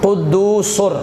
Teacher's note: ٹھیک ہے جی ہاں جی قدوسر، تو یہاں جو یہ سین پہ تنوین ہے آگے را ہے تو سر بنے گا، سر، قدوسن نہیں